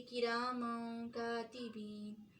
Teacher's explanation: جیسے کرامن کاتبین، اور یہ بھاری حروف نہیں ہے اس لیے اس کو بہت چھپائیں گے نہیں، لیکن نون کی آواز چھپائیں گے، کرامن کاتبین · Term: اخفا